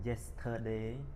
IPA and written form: ˈjestədeɪ (Yesterday)